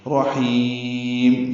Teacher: غفور الرحیم، ہا وسط حلق سے نکالیں گے، را میں دونوں رائیں پر ہیں، ہا وسط حلق سے نکالیں گے اور لمبا کریں گے، میم ساکن پہ ہونٹ بند کر لیں گے. رحیم، یہ وقفاً متعارض کے سکون اور میم ساکن پہ اظہار ہے، ہونٹ بند کر لیں گے، آواز روک لیں گے.